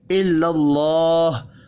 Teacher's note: اللہ کا نام زبر کی وجہ سے پر پڑھا جائے گا۔